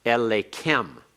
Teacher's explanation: Notice the accent over the lamed in Elenu. But here, the accent is on the heavy pronominal suffix. Kem, ken, hem, and hen are heavy. So the accent stays with them. Therefore, that makes the aleph the third back from the accent.